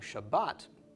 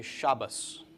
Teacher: in the Ashkenazic dialect, the tav is pronounced as a T when it has a dagesh and as an S when it does not